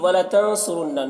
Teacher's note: نون میں اخفا ہوگا کیونکہ نون ساکن کے بعد صاد حروف اخفا میں سے۔ را کو پر پڑھیں گے، را کو پر پیش ہے، اور یہاں پر نون مشدد، نون میں غنہ ہوگا۔